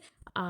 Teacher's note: আ ধ্বনি হচ্ছে নিম্ন কেন্দ্রীয় বিবৃত ধ্বনি